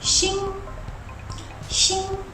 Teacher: Just like pinyin tone 1, it has a high and flat tone that goes shing, shing.